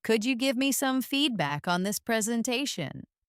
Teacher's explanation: The words feedback and presentation are the most important here. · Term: stress